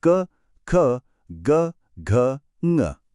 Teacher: सबसे पहले एकदम गले के पीछे ये जो ध्वनियां हैं क और ग, ये कंठ से आती हैं